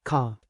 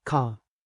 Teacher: In American English, we usually pronounce the R sound clearly even at the end of words like car or water. But in British English, especially in some areas, the R at the end of words is often softer or sometimes not pronounced. This can change how the whole word sounds. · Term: non-rotic accent